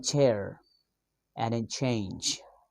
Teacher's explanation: according to places of articulations, the ch sound is post-alveolar sound, and according to manner of articulations, the ch sound is affricate. The ch sound is voiceless. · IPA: /tʃ/